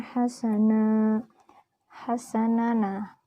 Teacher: Karena nun berharakat fathah tanwin dan diwaqaf. Cara membacanya, tanwinnya dihilangkan dan panjangnya 2 harokat. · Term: mad iwad